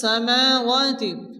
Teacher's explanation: মিমের উপর খালাস জবর, ওয়ার উপরে খালাস জবর, এক আলিফ টেনে পড়তে হবে